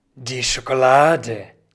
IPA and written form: diː ˈʃoːkolaːdə (die Schokolade)